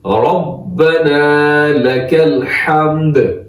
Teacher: را موٹا ہوتا ہے، با پہ تشدید ہے مضبوطی سے